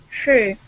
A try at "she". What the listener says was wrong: Okay, almost. Okay, open up your mouth. Okay, instead of saying like this, she. It's she. Open it up. Okay, open the teeth up. That's how you pronounce that sh. Okay, so your mouth opens up. Your teeth should not touch. Okay, if you had a teacher that taught you to say she, that's incorrect. Teeth open, tongue up, lips are like this. Okay, so teeth do not touch.